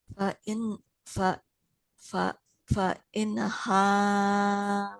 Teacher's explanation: Fa'in nunnya nggak boleh memantul